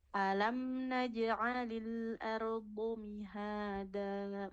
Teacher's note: Makhrajnya unik sekali ya. Pinggir lidah menempel ke gigi geraham atas. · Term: huruf do